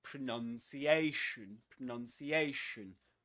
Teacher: pronunciation is a double stressed word, which means that there are two accents, two accented syllables. The one carrying the main accent is this one.